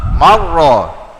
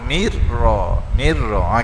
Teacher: huruf sebelumnya baris atas, bacaan tafkhim dipanggil, tebal.